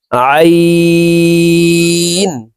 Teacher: হালকের মধ্যখান থেকে আইন হরফের উচ্চারণ করব